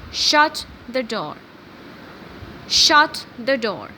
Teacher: For example, if I say shut the door, shut the door, here the sound is going down The sound is, the voice is falling at the end of the sentence. The voice is falling at the end of the sentence. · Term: falling pattern